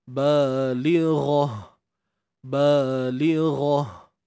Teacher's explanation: matikan huruf ta ni dengan kita membunyikan huruf ha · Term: ta marbutah